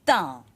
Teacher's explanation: made with the tongue between the teeth in the same position as you put your tongue to say th in English, but you need to bring your tongue well forward.